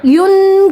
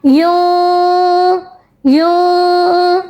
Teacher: نون کی آواز کو چھپایا جائے گا, غنہ کیا جائے گا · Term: اخفا